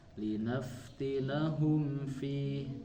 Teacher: Ketika ada mim sukun bertemu bukan huruf ba dan huruf mim, itu jadi izhar Bu ya, tidak ditahan tetapi hanya selewat saja. Linaftinahum fi, tidak linaftinahum fi, meskipun mim dan huruf fa itu Ditekan.